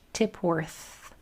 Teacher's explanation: My tongue is going between my teeth and I'm blowing. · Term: the TH